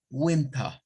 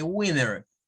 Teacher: los norteamericanos sustituyen la T por otra N al momento de hablar